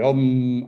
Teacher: Om, acabado con la letra M, que es una letra oclusiva, que bloquea la salida del aire y hace vibrar las cuerdas vocales, ¿no? Produce esa vibración en la cabeza, ¿no?